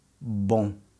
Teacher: Notice how my lips don't touch at the end.